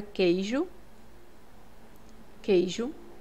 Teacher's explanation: eu não escuto esse U então aqui é um dígrafo · Quando eu escrevo a palavra queijo, queijo, esse QU é como se eu escrevesse assim, ó, queijo, tá? Eu não escuto esse U